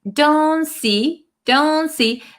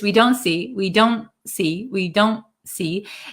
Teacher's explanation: So this T in American English kind of disappears.